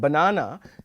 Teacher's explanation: the word banana has the stress on the second syllable